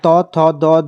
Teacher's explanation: और त, थ, द, ध अगर बोल के भी देखें तो आपकी जीभ दांतों को टक टक टक स्पर्श करती है, तो ये दंतिया हो जाएंगे।